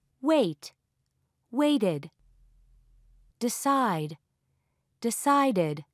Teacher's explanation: In words ending with t or d, it is pronounced as a separate syllable, id.